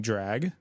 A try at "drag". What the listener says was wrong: almost like you said drugs.